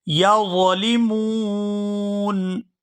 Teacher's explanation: یہاں وقف کریں گے تو وقف کی صورت میں نون جو ہے یہ ساکن ہو جائے گا